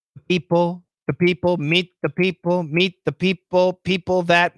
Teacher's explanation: the is also a short U. Perfect pronunciation is a short U. The. However, we're going to schwa it.